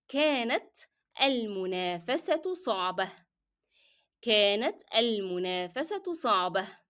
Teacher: I pronounce the sound of t مربوطة as t with the short vowel ضمة, and I dropped t, the sound of t in t مربوطة in the following word, which is صعبة, and I also dropped the sound of تنوين with ضمة un because I'm ending the sentence here.